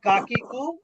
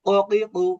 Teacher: এটা কঠিন বলে আপনি জিহ্বার গোড়া থেকে উচ্চারণ করবেন।